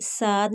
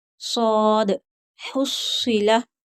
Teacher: ये 7 होते हैं, उन्हीं 7 में से एक है सौद। तो इसको पुर पढ़ेंगे, इसकी सीटी भी मोटी निकलेगी, साद नहीं कहेंगे, ये सीन की आवाज़ हो जाती है।